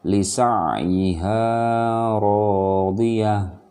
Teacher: dia tidak lagi dibaca tak marbutoh, tetapi dia berubah menjadi suara ha ya. Lisa'iha radiyah, berhenti kalau dia ada di akhir kalimat. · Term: tamarbutoh